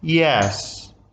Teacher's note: mean if I say are you hungry and I say yes there is no rising and falling in my intonation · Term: level tone